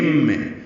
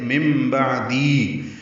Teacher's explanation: من کی جگہ مم، کیونکہ نون ساکن کے بعد با آ گیا ہے تو یہ بھی اقلاب ہے